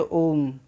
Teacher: ओम ऐसे नहीं कहते हैं ओम, ओम ऐसे कहते हैं ओम। तो इसमें जो ओ को लगातार खींच कर बोल रहे हैं यही प्लुत हो गया